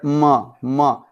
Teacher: Nasal sounds, those sounds which are pronounced through nasal, like M. When you pronounce the word m, that means the air has to come out from nasal as well.